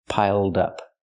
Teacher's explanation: Not piled up, but piled up. Connect the d with the next word. Dup, dup. Piled up.